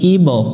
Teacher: বা অক্ষরের উপর সুকুন আছে প্রতিধ্বনি সৃষ্টি করতে হবে কলকলা করতে হবে